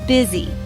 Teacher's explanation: Stress is on first syllable.